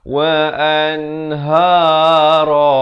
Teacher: Ha dipangkal kerongkong dua harakat. Ra dibacakan dengan tebal dua harakat.